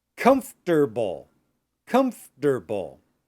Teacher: So we don't say the syllable for.